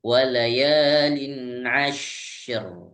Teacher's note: Syaknya diberikan kesempatan untuk nafas atau desisnya yang lebih kencang dulu.